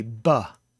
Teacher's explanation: which could be ba the plosive sound or the fricative sound with the ba you pronounce it with your lips bursting open